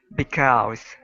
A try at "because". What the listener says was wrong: Okay, now you don't need to pronounce an oo. Okay, so instead of because, it's only because. Because.